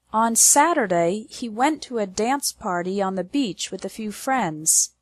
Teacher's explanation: the stress is on the words Saturday went dance party Beach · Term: strong words